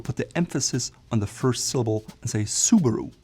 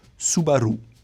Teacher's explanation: The R is rolled on the R, and the emphasis is more in the middle.